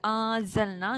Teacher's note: پھر انزلنا، نون ساکن کے بعد زا ہے، یہ اخفا ہے، ٹھیک ہے، یعنی آواز آپ چھپا لیں. انزلنا، نون زبر الف نا، یہ الف مدہ ہے.